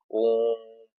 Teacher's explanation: जैसे ओम का हम लोग उच्चारण करते हैं दूर तक, ओम, इस तरह की जो है प्लुत स्वर जो है ओम के अंतर्गत आता है, 3 मात्रा का समय लगता है